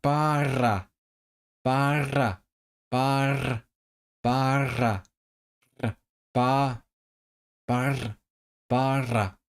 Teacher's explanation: But in in Welsh actually in traditional accents, you use the trill all the time.